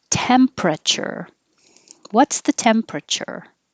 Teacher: we don't say the E so drop that and now you have the pr together